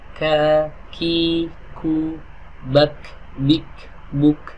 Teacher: lidahnya ini menempel di pertemuan antara langit-langit yang keras dan langit-langit yang lunak. Ka, ki, ku, bak, bik, buk, ada hamsnya. · Huruf qaf pangkal lidahnya bertemu dengan langit-langit yang lunak. Adapun huruf kaf pangkal lidahnya bertemu dengan langit-langit yang lunak dan langit-langit yang keras.